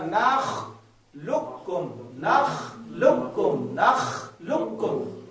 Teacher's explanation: نخلقکم، لام کو کاف سے ملایا، ٹھیک ہے. نخلقکم، یہاں پر آپ نے موٹا کاف نہیں پڑھنا ہے بلکہ پتلے کاف کے ساتھ لام کو جوڑنا.